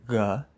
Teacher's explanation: And one of these features is the voiced velar fricative from Proto-Italic, which would have sounded something like g, a kind of G sound, but with your throat a little bit more open and more air coming out